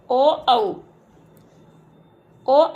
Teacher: ओ औ का जो उच्चारण स्थान है वो कंठोष्ठ है। आ और उ के संयोग से ओ वर्ण बनता है, संयुक्त स्वर है।